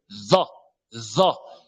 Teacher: En faisant sortir la langue vers les incisives supérieures.